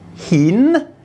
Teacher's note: There's the H initial consonant again, the I vowel, and the N final consonant. And this word has a rising tone.